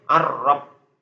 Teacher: itu bisa ditasilkan jadi bunyinya ar-rob, lamnya terbuang.